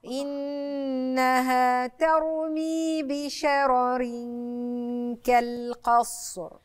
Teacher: الراء هنا عندي ساكنه قبلها مفتوح فهتبقى مفخمه